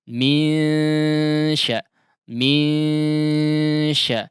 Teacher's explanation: tidak betul-betul berbunyi ang ya, akan tetapi semi ang mungkin ya atau antara ang dengan n ya. Karena memang masih ada udara yang keluar dari al-jauf ya dari mulut meskipun gunnah juga dikeluarkan di situ. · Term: ikhfa